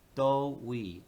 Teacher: we only changed that initial second tone into a first tone